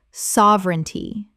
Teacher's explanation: Three syllables in natural speech. The middle syllable collapses.